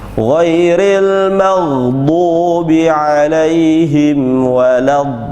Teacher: Ada setelah huruf dha berharokat fathah, kemudian ada lambang seperti itu. Huruf lamnya terdapat tasydid di atasnya, maka lebih dari 4 harokat